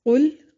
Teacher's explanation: قاف کو موٹا ادا کریں گے، لام کو ہلانا نہیں ہے۔